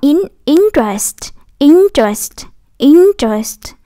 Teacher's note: À, cái chữ chữ e đầu ngược mình đọc thành chữ ơ đó, interest.